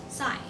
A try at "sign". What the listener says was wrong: Sign. Not sign. Sign. There's no nasal sound to this one.